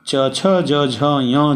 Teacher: जिह्वा जहाँ पर च छ ज झ य स्पर्श कर रही है दांत के थोड़ा पहले ऊपर, उस स्थान का नाम है तालु